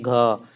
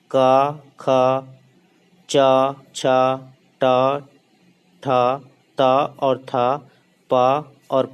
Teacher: इनको सघोष इसलिए कहा जाता है, जैसे हम ग बोलते हैं तो हमारे कंठ में क्या है, कंपन होता है।